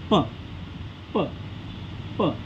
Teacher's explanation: प प प तेव्हा प दोन्ही ओठ एकामेकांना जुळतात · जेव्हा अक्षरे आपण उच्चारतो तेव्हा आपल्या ओठांचा एकामेकांना स्पर्श होतो